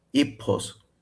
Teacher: It's aspirated like English, but it's also long. · in criate Greek geminate P is aspirated so I'm trying not to aspirate it so it's epipos okay >> wait wait wait wait so how would how would a criate say this if they're saying.